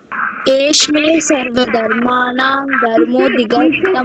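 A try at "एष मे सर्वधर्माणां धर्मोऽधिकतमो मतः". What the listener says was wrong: Separately, don't say Eshme. Say Eshame. Sha is separate. Eshame.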